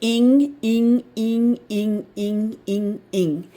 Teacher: When you have ing, the i is kind of sounding like a long e sound. Just a little.